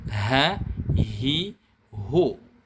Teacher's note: huruf H besar makhorijul huruf nya itu dikeluarkan dari tenggorokan bawah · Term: huruf ha besar